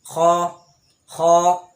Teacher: তো হলকের শেষ হতে খ উচ্চারণ হবে,